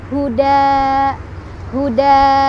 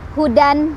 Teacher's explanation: Ketika wasol atau disambung kita bacanya hudan, terus apa kalimat selanjutnya gitu ya, hudan, hudan. Tetapi ketika berhenti, tanwin fathahnya berubah menjadi fathah saja dan dibaca panjang 2 ketukan. Maka cara baca ketika berhenti adalah huda, huda gitu.